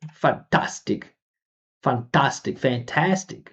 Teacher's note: It's a different vowel sound. Tast. We say ah.